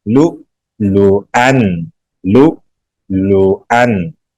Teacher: لام کے ساتھ حمزہ ہے، جھٹکا لگائیں گے